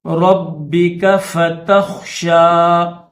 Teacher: با مشدد ہے تو اس کو سختی کے ساتھ پڑھیں گے